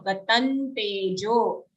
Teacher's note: Anuswar here. In the anuswar we have a half na.